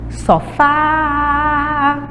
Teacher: eu demoro mais, eu tenho mais intensidade quando eu falo o pedacinho fá. Então essa é a sílaba tônica.